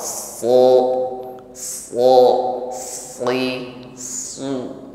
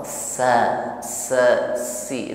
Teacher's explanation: sehingga suaranya itu ngumpul naik ke langit-langit mulut ini yang membuat bunyi SH ini menjadi lebih tebal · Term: Shad